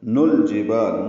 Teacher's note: نون کو الجبال کے لام سے ملانا ہے، اظہار قمری ہے، با الف مدہ ہے، دو حرکات لمبا ہے.